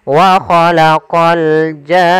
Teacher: Panjangkan janya dulu 6 harokat baru masuk ke nun. Wa khalaqal jan. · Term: mad lazim kalimi musaqqal